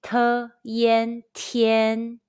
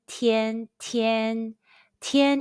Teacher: Let's combine the initial t, the final yen, and the high-pitched first tone all together.